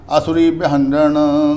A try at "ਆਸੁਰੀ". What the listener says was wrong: ਬਈ ਅਸੁਰੀ ਨੂੰ ਇੱਥੇ ਤੁਹਾਡੇ ਕੋਲ ਕੰਨਾ ਨਹੀਂ ਹੋਣਾ ਹਨਾ, ਇੱਥੇ ਕੰਨਾ